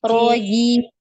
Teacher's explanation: Rojim, jangan ada decak ya di jim tadi ya. Tidak ada aliran nafas untuk huruf jim ya.